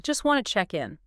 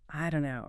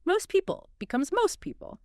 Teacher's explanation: if a t sound comes at the end of a word or sometimes in the middle, especially before another consonant or just in fast speech, it often gets totally dropped